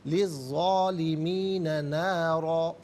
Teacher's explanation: ज़ा खड़ा ज़बर ज़ा और ज़ा अलिफ ज़बर ज़ा, दोनों तरीक़ों से पढ़ना दुरुस्त है। नारन, रा पर 2 ज़बर की तनवीन है, यहाँ रुकेंगे तो नारा पढ़ा जाएगा।